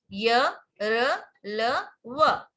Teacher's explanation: इन व्यंजनों का उच्चारण करते समय मुख का कोई भी अंग एक दूसरे को पूरी तरह स्पर्श नहीं करता। एक दूसरे को टच नहीं करता। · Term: अंतस्थ व्यंजन